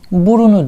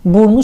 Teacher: Ünlü ile başlayan bir ek aldığında ikinci hecedeki ünlü düşer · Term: ünlü düşmesi